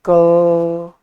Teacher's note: आपने क बोला, उसके बाद आप अ को खींच रहे हैं, तो यानी आप उच्चारण अंततः स्वर का ही कर रहे हैं।